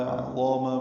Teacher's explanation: عظاما میں عین وسط حلق سے ادا ہوگا، ضا پر پڑھیں گے، الف مدہ ہے، دو حرکات لمبا ہے.